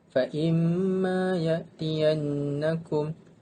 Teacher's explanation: mim bersyaddah dan nun bersyaddah adalah merupakan wajibul gunnah, hendaklah didengungkan dengan kadar dua harakat